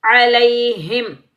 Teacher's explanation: علیہم، لام یا زبر لئی، یا لین کو بغیر کھینچے پڑھیں گے۔ جب بھی یا ساکن سے پہلے زبر آ جائے، جیسے میں نے آپ کو یہاں سمجھایا کہ جب بھی زبر آئے گا تو یہ ہوگا یا لین، اس کو بغیر کھینچے پڑھیں گے۔